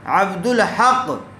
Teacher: ہاں عبد الحق، یہاں الف لام کے بعد ہا آیا ہوا ہے اور ہا حروف قمری میں سے ہیں، اس لیے یہاں دال کو ہا سے نہیں ملائیں گے بلکہ دال کو لام سے ملا کر پڑھیں گے